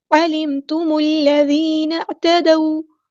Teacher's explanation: میم کو ہم نے لام کے ساتھ ملا دینا ہے، حمزۃ الوصل ہمارا ڈراپ ہو جائے گا ، علیم، یہاں پر میم ساکن کی آواز کو ہلانی ہے،